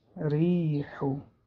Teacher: وقتی که با کثره آید باریک خوانده می‌شود